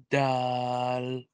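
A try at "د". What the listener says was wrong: Don't stretch letters, okay? Just dal.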